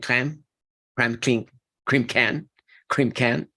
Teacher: Those stop sounds need to be aspirated, okay? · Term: aspirations